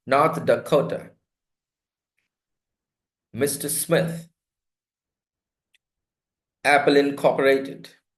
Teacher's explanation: The second word is stressed in English. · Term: proper nouns